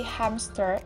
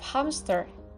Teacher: Voiceless stop insertion where between a nasal consonant and a voiceless fricative. A voiceless stop with the same place of articulation as the nasal consonant is inserted.